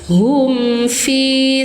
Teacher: Hum fi satu ayunan panjang mad thobi'i zohiri